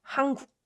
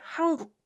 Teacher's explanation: So 은 softens to 응 when it meets k sound. So that's why it's natural to pronounce it like 한국.